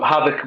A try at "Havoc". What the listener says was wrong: It sounds like you say Haddock. it all mixes up and just can't turn into like a mush.